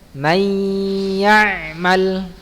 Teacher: Cara membacanya idgham, dimasukkan ke dalam huruf berikutnya dengan tempo gunnah yang dipanjangkan.